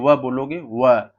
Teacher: आप जैसे व बोलोगे व, तो आपको यहाँ जीभ हल्का सा दांत में धक्का मार रही है और ओठ भी आपको थोड़ा सा उसमें उत्प्रेरित कर रहा है, तो दंतोष्ठ हो जाएगा आपका।